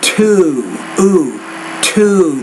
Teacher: The first, again, the word to, two, the ooh sound, you're not making that long enough